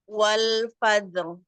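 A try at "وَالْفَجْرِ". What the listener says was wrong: Fajar. Jimnya ditipiskan lagi, Bun. Karena huruf jim itu istifal. Agak ringan aja kol-kolahnya. Wal fajr. Wal fajr. masih kayak tebal ya huruf jimnya. Wal fajr.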